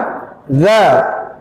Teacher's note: huruf zal itu keluar dari ujung lidah dengan ujung gigi seri atas kita